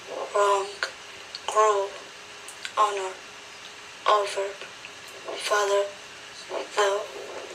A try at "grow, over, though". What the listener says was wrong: So the one thing I think you can improve on in lesson 7 is the O. O. It's a long vowel, make it a little longer. Boat, grow, over, though, though. So I think you can do a little bit better with that one.